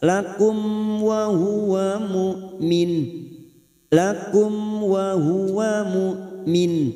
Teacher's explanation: Berikutnya masuk ke huruf lam yang bertasdid willakum, mim sukun bertemu waw idhar safawi dibaca jelas